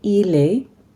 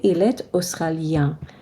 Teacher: there is a subtle pronunciation of the T because it's followed by a vowel. So normally we say il est, but because it's followed by a vowel, we say il est australien.